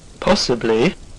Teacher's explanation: if you said fall rise you are correct